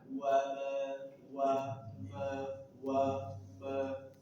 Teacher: mim dua bibir dipertemukan dan dirapatkan disertai lunah.